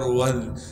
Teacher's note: واو کو ذال سے ملائیں گے کیونکہ ذال ساکن ہے اور ذال کو باریک کر کے پڑھیں گے. واو ذال زبر وذ.